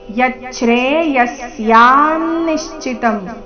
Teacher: ವಿಸರ್ಗದ ಉಚ್ಚಾರಣೆ ಅರ್ಧ ಸ ರೀತಿ